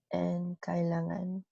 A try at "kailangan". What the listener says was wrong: Good. So I don't see any problem with you pronouncing this consonant, which is great.